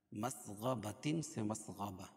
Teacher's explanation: وقف کی حالت میں گولتا وقف کی حالت میں ہائے ساکنہ سے بدل جاتی ہے